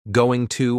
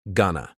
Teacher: going to almost always becomes gonna. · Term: reductions